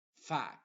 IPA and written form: fæks (Fax)